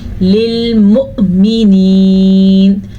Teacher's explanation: اب حمزہ پہ ہے ساکن تو جھٹکا پیدا ہوگا